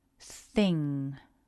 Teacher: pop the tongue between the teeth and then we've got a short e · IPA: /θ/